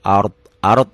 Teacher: rnya dibaca tebal karena sebelum ro mati baris di atas